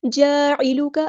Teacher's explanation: عین کو مستحل لیکن مڈل تھروٹ سے ادا کرنا ہے ، اور کاف کی زبر کو لمبا نہیں کرنا، للناس، لام